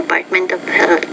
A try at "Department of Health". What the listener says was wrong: Okay, notice department. The P you want to pronounce with more air. Not department, but department. The Department of.